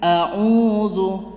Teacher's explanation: jangan sampai membaca Qul a'udzu kepanjangan, tapi a'udzu 2 hitungan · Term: mat tabi'i